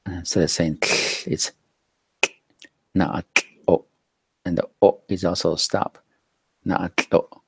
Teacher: that T/L is like the English CL sound, but we want to cut it short because it's a stop right there